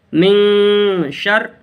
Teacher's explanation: نون کی آواز کو ناک میں چھپا کر پڑھیں گے